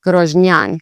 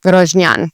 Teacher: the emphasis is a bit more actually on the last part of the word, which is fairly uncommon